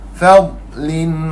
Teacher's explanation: huruf dad tidak ada qalqalah.